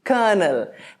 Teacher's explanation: The emphasis is on the first syllable. Colonel. And this is in British English, they pronounce it colonel, and in American English, it is colonel.